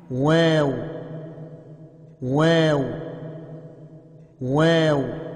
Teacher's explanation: دونوں ہونٹوں کی تری و خشکی مل کر کچھ کھلا رہ کر واو ادا ہوتا ہے